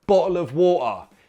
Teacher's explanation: He still uses the glottal T